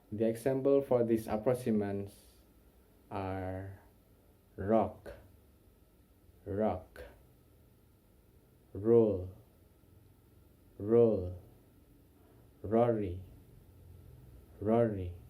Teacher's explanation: Central approximants are made by curve back your tongue toward the top of the mouth while allowing the air to pass along one or both sides, as in R, R. So curve back your tongue toward the top of the mouth, but don't touch it don't touch the alveolar or the top of the mouth, like you can see in the picture.